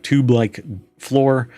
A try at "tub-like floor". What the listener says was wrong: That's like a tub-like floor. You said tube-like.